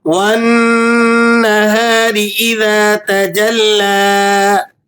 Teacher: नून पर आपने गुना अदा करना है। नून मी मुशद्दद हमेशा गुना होते हैं। आप यहां गुना अदा करेंगे और र इस पर ज़ेर है।